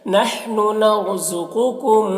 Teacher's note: रॉ को पुर पढ़ेंगे, इस कौफ को भी पुर पढ़ेंगे।